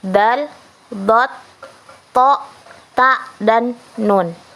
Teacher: Atau dalam bahasa Arab itu zalqa lisawi asnani, atau disebut juga dengan lamional veolar, yaitu bunyi yang dihasilkan melalui sentuhan ujung lidah kepada pangkal gigi atas di depan gusi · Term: bunyi apicodenal alveolar